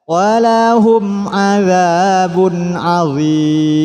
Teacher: Tanwin bertemu ain. Ain merupakan hurufnya izhar, huruf yang 6, maka harus dibaca jelas.